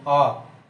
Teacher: जैसे आ के लिए अंदर से आवाज निकालनी पड़ती है, आ, पूरा मुंह भी खुलता है, कंठ से आवाज आती है अंदर से, इसलिए पश्च स्वर